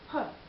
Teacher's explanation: the students having a problem with aspirating the initial consonant